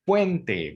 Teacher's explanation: Puente, la U y la E, es un diptongo que debe de escucharse en una sola emisión de voz.